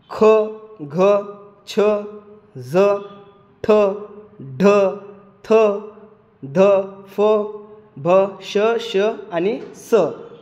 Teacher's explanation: ठ ढ थ ढ फ भ श आणि स या सर्वांना या सर्व वर्णात ह प्रमाणे वायू बाहेर पडतो म्हणून यांना सुद्धा महाप्राण असे म्हणतात